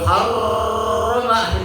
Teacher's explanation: Nggak boleh getarannya terlalu banyak. Di roh itu getarannya tidak boleh lebih dari 3 getaran ya. Nggak boleh itu nanti kalau R-nya banyak getaran maka akan mengeluarkan udara.